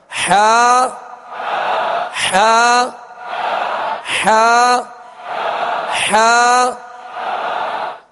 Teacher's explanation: اس کو وسط حلق سے بالکل ایزی ادا کرنا ہے، تکلف سے ادا نہیں کرنا